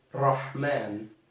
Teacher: going to curl a little bit up from the front and the tip of your tongue is going to batter continuously for a little bit of time